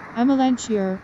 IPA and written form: æməˈlænʃɪər (Amelanchier)